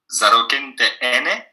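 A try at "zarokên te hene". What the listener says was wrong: Et c'est pas le H muet. Il faut faire gaffe. Hana. Zarokente hana.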